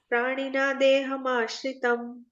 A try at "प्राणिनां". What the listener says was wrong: Praninam. Praninam. Praninam like that. Like in Hindi or Gujarati, we say pachamyannam. Like not we don't recite ma so prominently, but in Sanskrit we do have this.